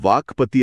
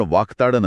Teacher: ग च्या जागी क हा कठोर ध्वनी येतो